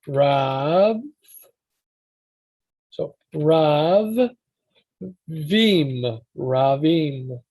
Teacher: when you have a second syllable, the B does double time. It basically gets split and covers both.